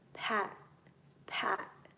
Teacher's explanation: when we pronounce these sounds we almost cut them off so they stop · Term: T stop